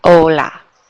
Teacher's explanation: It's like you're dropping that H and you just start with the O, hola.